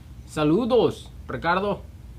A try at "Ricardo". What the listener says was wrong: You couldn't just say Ricardo. You had to roll your R's.